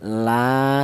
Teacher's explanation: panjangnya yaitu 1 alif atau 2 harokat atau 2 ketukan. Jadi la dibaca matobi'i, alasannya ada alif yang didahului huruf yang berharokat fathah.